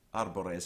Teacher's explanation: arbores has a light middle syllable surrounded by two heavy syllables